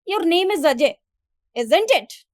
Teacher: while speaking this sentence, my tone was lower as compared to the question tag I have used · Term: intonation style